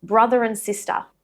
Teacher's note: the R becomes a linking R. We link it to and or n.